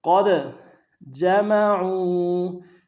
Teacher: قاف کو دال کے ساتھ ملانا ہے، دال حرف قلقلہ میں سے قلقلہ کریں گے، قاف کو موٹا بھی ادا کریں گے. قد جمعوا، جیم کو نون سے ادا کریں گے، میم کو نون سے ادا کریں گے، عین کو موٹا ادا کرتے ہوئے واو کے ساتھ ملانا ہے، واو مدہ ایک الف دال میں کھینچیں گے.